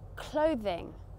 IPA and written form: ˈkləʊðɪŋ (clothing)